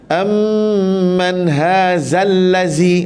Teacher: Baik, kita tengok di sini, yang ni yang ustaz selalu tekankan, selalu kita terlepas pandang, ialah makhraj zal. Hujung lidah, hujung gigi.